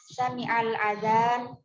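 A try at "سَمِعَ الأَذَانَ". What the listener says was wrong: Adzan, hamzahnya panjang. Sami'al adzan.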